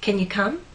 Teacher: the main verb is come. So come receives the main stress.